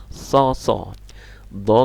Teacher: seperti sa tapi lidah tengahnya naikkan ke atas